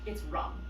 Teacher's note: So in Hindi they drop that last a. So in Hindi the modern Indian language which developed out of Sanskrit it's Ram.